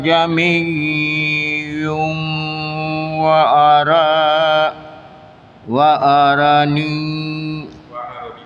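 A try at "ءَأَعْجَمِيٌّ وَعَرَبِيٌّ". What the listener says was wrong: Kalimat ini baca juga a'jamiyu wa arabi. Yang hamzah kedua, yang kalau di sini lambangnya alif, itu sebenarnya hamzah kedua. Dibacanya enggak jelas. Jami.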